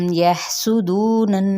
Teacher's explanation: सीन पे सीटी को वाज़ा करेंगे लेकिन हरकत को लंबा नहीं करेंगे · हा को वस्ते हल्क से अदा करते हुए हम्स करेंगे